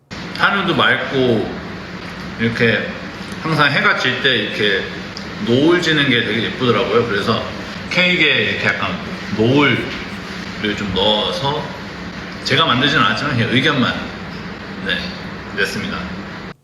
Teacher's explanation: speech goes up and down fairly smoothly. I'd say there aren't any like sharp peaks and it doesn't even go up really high. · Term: intonation